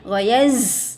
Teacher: Ada bunyi desir, bunyi safir ya. Ada sifat safir di sini.